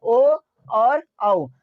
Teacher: ओ बोलते हैं हम लोग ओष्ठ से और कंठ से निकलता है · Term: कंठ और ओस्ट